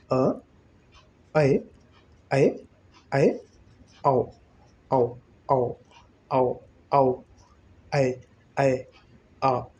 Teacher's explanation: मुख द्वार खुलने का प्रयत्न हो रहा है, आधा ही खुल के रुक जा रहा है, तो यह अर्धविवृत है।